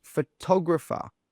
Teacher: That tog sound is pronounced a little bit louder and a little bit stronger than the rest of the sounds. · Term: word stress